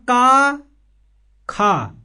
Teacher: वाले दिखाई दे रहे हैं इन्हें हम कह देते हैं आघोष आघोष का मतलब होता है कि इनके वर्डों के उच्चारण में गूंज उत्पन्न नहीं होती है